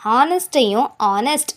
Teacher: இது ரெண்டுலேயுமே அங்கே டைரெக்டாக கொடுத்துருக்கிற ஹெச் அப்படிங்கிற கான்சனண்ட்டை நம்ம ப்ரனன்ஸ் பண்ணுறது கிடையாது, சரிங்களா? அதனால தான் அதுக்கு முன்னாடி நம்ம ஆன் அப்படிங்கிற இன்டெஃபினட் ஆர்டிக்கிளை யூஸ் பண்ணுறோம்.